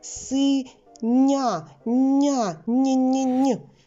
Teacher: буква я поділилася своїм м'яким звуком й зі звуком н і він перетворився на м'який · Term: м'який нь